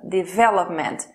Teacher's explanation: A sílaba tônica é a segunda.